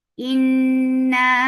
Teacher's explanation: This gunna is akmal, so keep the sound in your nose for a longer time. Inna, and this is mad munfasil jais, so make it 4 counts long.